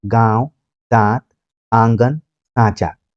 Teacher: चंद्रबिंदु को भाषा विज्ञान की शैली में हम अनुनासिक बोलते हैं। ऐसे स्वरों का उच्चारण नाक और मुंह से होता है और उच्चारण में लघुता रहती है